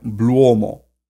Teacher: went through a secondary shift in old high German to where that long o became a diphthong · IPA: /ō/